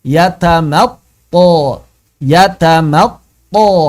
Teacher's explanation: Dan hati-hati huruf sebelum thnya ya si mimnya ini jangan jadi tebal.